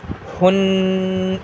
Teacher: اور یہ بڑی ہا ہونے نہ پائے، بالکل سادہ پڑھیں گے